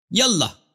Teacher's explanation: یہ الف وصل کے لیے. تو یہ جب یا کہیں گے تو اس کے ساتھ یہ الف کے تلفظ نہیں ہوگا.